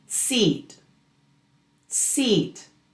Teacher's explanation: This sound has much more tension. Your lips are spread, almost like in a smile. You may feel tension in your cheeks. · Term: long e